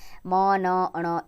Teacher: इन ध्वनियों के उच्चारण में वायु नाक द्वारा बाहर निकलती है। इसलिए इन्हें नासिक व्यंजन कहा जाता है।